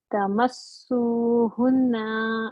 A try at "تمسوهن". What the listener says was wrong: اچھا اب دیکھو ادھر نا ایک حرکہ صرف کرنا ہے, بالکل لمبا نہ کرو آپ اس کو. تمسوہن, سو پارٹ کو دو حرکہ کرنا ہے, ہننا پارٹ کو لمبا نہیں کرنا. تمسو تو لمبا کرنا ہے, 2 سیکنڈ 2 حرکات.